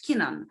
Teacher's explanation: On starts with a vowel, but we put it together and say it as one word, keen on. I'm keen on music, for example, right? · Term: linking